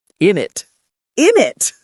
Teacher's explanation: in very fast, casual speech, you'll often hear isn't it reduced even more to just Innit.